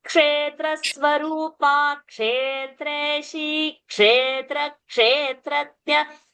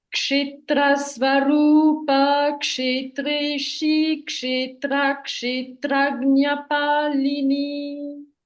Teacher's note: Now only one thing you have to do is A, I, O, Au. These are permanently long sounds. So instead of finishing Kshetra Swarupa, hold the Kshe.